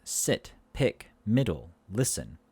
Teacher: So this is a high front lax vowel, not tense, lax. So again, we lift our tongue to the top of our mouth. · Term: short e